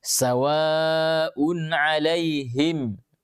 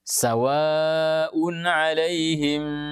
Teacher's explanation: Jadi semua mim sukun ini dibaca dengan jelas, tidak boleh berdengung. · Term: izhar syafawi